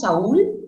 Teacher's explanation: una vocal abierta, con una vocal cerrada, y el acento está en la cerrada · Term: hiato acentual